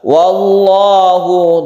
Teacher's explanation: Wallahu ada lafzul jalalah yang sebelumnya ada fathah sehingga membacanya tebal. Wallahu disebut tafkhim atau mufakham.